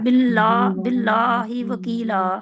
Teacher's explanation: मोटा नहीं है बिल्ला ला को खींचना है